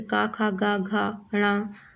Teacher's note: का के जितने भी वर्ण हैं का वाली लाइन के, का, खा, गा, घा, ण, और हा भी कंठ से उच्चारित होगा